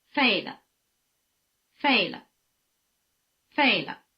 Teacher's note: After the falling tone, the pitch of the neutral tone is at the bottom. It really takes the place of the tip of the tail of the falling tone.